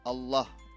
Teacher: Kemudian tafhim ini lafaznya tebal, hanya ada dalam ya lafaz jalallah ya